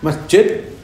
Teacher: makhrajnya jim dengan ya kan sama di tengah-tengah lidah